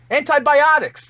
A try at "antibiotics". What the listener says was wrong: Why is the emphasis on Biden?